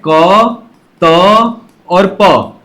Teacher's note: अघोष अल्पप्राण ध्वनियां हैं जिसका नाम है क त और प